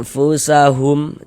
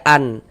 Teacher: Maka cara membaca ikhfa dibaca dengan samar. Jadi bunyi nun sukun atau bunyi tanwinnya itu kita baca samar dengan kita bersiap-siap masuk ke dalam huruf ikhfa hakikinya. Makanya kita baca anfusahum, jangan baca an. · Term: ikhfa hakiki ausat